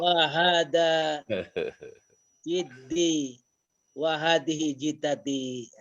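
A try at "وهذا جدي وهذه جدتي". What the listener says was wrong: Pakai fathah aja Ustaz. Ikutin kitab ya. Wa hadza jaddi.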